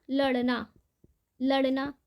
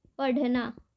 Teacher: जीव के अगले भाग को थोड़ा ऊपर उठाकर झटके से नीचे फेंकते हैं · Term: द्विगुण व्यंजन